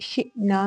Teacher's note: میں واؤلین ہے، نرمی کے ساتھ ادا کریں گے، شئنا میں حمزہ ساکن ہو تو اس پہ جھٹکا ہوتا ہے